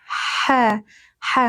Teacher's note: Ha tenggorokan bagian tengah. Ha ha ha mengalir nafasnya dan suaranya